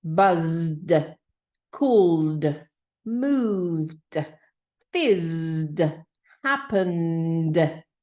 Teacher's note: ending sounds like a D, not a t or an id, but a D